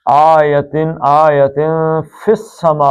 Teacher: اخفا کریں گے، ناک سے نکالیں گے